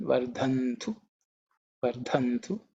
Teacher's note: this dha is the fourth letter in the ta varga, so it has to be aspirated